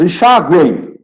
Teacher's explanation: O M tem som de Y, semivogal, então, semivogal.